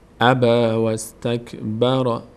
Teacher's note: میشه این یا خونده نمیشه اب وس الف خونده نمیشه اینجا این وسط الف در هنگام وصل خونده نمیشه چون قبل و بعدش به هم وصل میشه